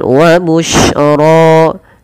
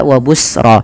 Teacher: shin itu memiliki salah satu sifat namanya tafasyi. Apa itu tafasyi? Yaitu intisyarus saut, menyebarnya suara di dalam mulut.